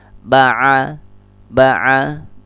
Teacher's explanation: Ini syafawi pertemuan antara bibir atas dengan bibir bawah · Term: huruf ba